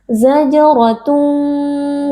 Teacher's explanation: kita angkat pangkal lidah karena ro berharakat fathah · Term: tebal